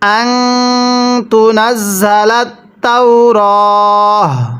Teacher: ওয়াকফের সময় গোলতাগুলোকে হা বানিয়ে পড়তে হয়